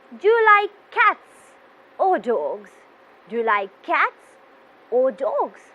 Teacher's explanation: here we can see this rising then falling pattern of intonation so the first choice you have to raise your voice and the second choice your voice will be going down